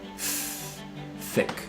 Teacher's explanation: th sounds, so the tongue tip coming to the back of the front teeth or maybe even in between the teeth like that.